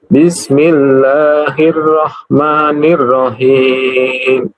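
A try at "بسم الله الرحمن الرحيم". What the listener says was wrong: Nirrahim. Ra-nya apa tasydidnya, hati-hati. Nirrahim. Ar-Rahmanirrahim.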